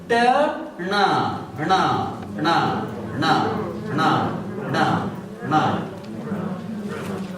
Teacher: Nasal sound with the same tongue position as ta.